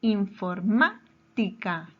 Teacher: Su mayor fuerza de voz está en la antepenúltima sílaba. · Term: palabra esdrújula